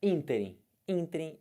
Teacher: Quem é a sílaba forte do ínterim? O in. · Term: proparoxítono